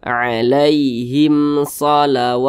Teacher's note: Shad bukan huruf mim bukan huruf ba berarti hukumnya izhar syafawi maka dibaca jelas tidak berdengung jadi jangan dipanjangkan dibaca pendek saja